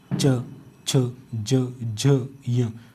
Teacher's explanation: तालव्य वर्ण तालू से बोल रहे होते हैं